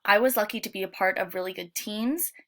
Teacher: he tends to replace S's with sh sounds, ah with o, and with air.